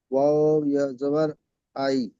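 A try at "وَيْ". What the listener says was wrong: ওয়াও ইয়া জাবার ওয়াই, আই নয়, ওয়াই।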